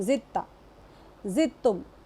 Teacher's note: یہاں پر کہیں نہیں پڑھ رہے ہم دال اور تا جب مل گئے ایک ہی مخرج سے جب دو ٹکر کھانے والے حرف نکلتے تو پھر ہم کیا کرتے دال کو وہاں پر ادا ہی نہیں کرتے اور تا کو تشدید دے دیتے